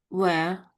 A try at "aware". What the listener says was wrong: Try and put an A in front of it. So aware, aware. It's more of an You're saying air. It's more Aware, aware. Sometimes you're flipping back to the V again here with the W. You're making a V sound with the W is. So it's lips together, like you make a little circle. Put your lips together like you're kissing someone on the cheek.